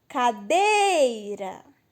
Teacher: O dei é o mais forte. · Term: sílaba mais forte